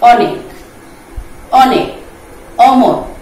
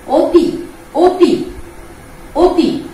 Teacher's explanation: ও দিয়ে উচ্চারণ করলাম বা মুখটাকে চাপিয়ে নিয়ে আসলাম আমি, এটা হচ্ছে ধ্বনির সংবৃত উচ্চারণ